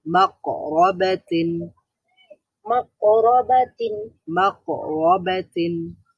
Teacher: এখানে কফের মধ্যে আওয়াজটা বন্ধ হয়ে যাবে, কলকলা হওয়ার কারণে পাল্টা আবার তৈরি হবে।